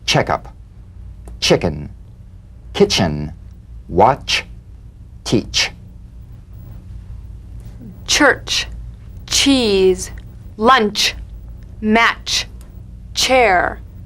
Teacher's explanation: put it together into one sound ch a crisp staccato treatment feel a sharp crisp percussive sensation between the tip of the tongue and the gum ridge now feel the crisp staccato in these words checkup chicken kitchen